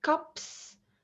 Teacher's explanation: the vowel sound is a bit shorter before the voiceless consonant p